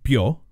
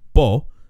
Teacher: the bee in bio is slender while the bee in bo is broad · The only difference in pronunciation between bio, meaning alive, and bo, meaning cow, is that the B in bio is slender, while the B in bo is broad. We can sense that there's a slight difference in how those two B's are pronounced, but it's kind of hard to put your finger on.